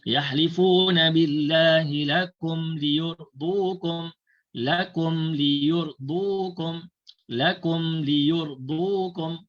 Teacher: Mim dibaca jelas tanpa dengung. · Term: izhar syafawi